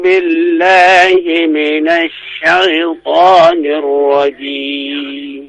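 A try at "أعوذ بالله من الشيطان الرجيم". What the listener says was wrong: A dibuka, Pak ya. Jangan o tapi a.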